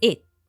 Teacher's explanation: the T sound in it becomes a stop T sound